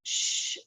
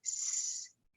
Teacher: Or in Judeo-Arabic in Iraq, instead of pronouncing the sound sh like their Muslim neighbors, they pronounced it s